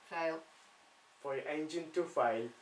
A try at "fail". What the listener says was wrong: Not fail. Fail. A. Fail. Fail. Slightly longer with the A. Fail.